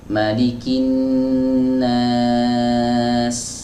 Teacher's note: saat kita mewakaf bacaan pada huruf sin, maka dikasih aliran sedikit. Malikin nas, ada sedikit ya, tapi nggak boleh berlebihan.